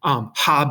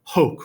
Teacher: H is what we call an aspiration. It's just you letting out a puff of air, right? It's a ha sound.